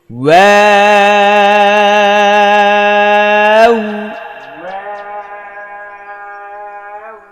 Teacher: ওয়াও বলার সময়ও ফার্স্টে ঠোঁটটা রাউন্ড থাকবে, ঠোঁট গোল থাকবে।